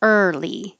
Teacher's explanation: It looks like there's two vowels, but you only hear one vowel. And it's not even really a vowel because the sound is just making the R noise. But we count that as a R vowel, early.